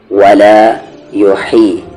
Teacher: ہا کا مخرج بیچ والا حلق جہاں سے عین نکلتا ہے، یحیی نہ کہ آپ یوہی پڑھ دیں، یوہی یہ تو غلط ہی ہے.